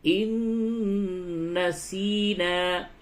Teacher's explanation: نون مشدد ہے، یہاں پہ غنہ ہوگا